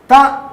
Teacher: అన్నప్పుడు ఈ రెండు పళ్ళ మధ్యలో నుంచి ఎలా గాలి రావాలి త అంటే రెండు పళ్ళ మధ్యలో నాలికను పెట్టి గట్టిగా త అంటే మాత్రమే దానికి ప్రాణం ఉంటుంది